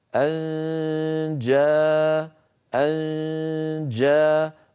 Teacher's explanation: ان جاءه طبعا الجيم من وسط اللسان كما مر معنا فان انتقل من مخرج الهمزه الى مخرج الجيم من غير اغلاق له